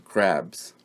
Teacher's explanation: And in crabs, it's B. There's the B sound right before the final S in crabs.